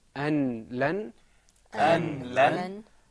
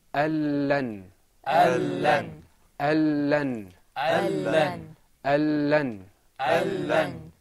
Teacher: The noon is going to disappear with the next, and both letters are going to become one letter, and we're going to stress the sound. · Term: idgham